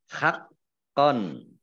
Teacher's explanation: Nah, kofnya dibaca double, ya ada tasdidnya.